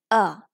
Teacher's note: in the unstressed syllable the vowel just shrinked to schwa